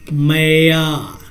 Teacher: या के बाद 3 गुना समय लगा, ओ के बाद यहाँ समय लग रहा, ओ, यानी जिस स्वर में समय 3 गुना लगेगा, 3 गुना, 4 गुना, 5 गुना, ये आपके ऊपर निर्भर करता है। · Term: प्लुत स्वर